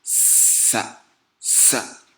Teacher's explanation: La première lettre étant sa. Donc ça qui se prononce en sifflant et que la langue est à l'intérieur de la bouche. Donc ça se prononce comme s'il s'agissait d'une cigaille qui vole. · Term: sifflement